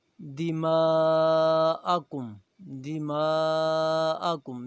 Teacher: میم کے اوپر مد ہے، اسے چار الف کے برابر کھینچا جائے گا۔